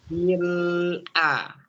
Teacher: Jadi ketika bil lidahnya ke langit-langit, jangan dikembalikan suaranya.